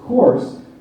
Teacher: we've gone from an ooh sound to an O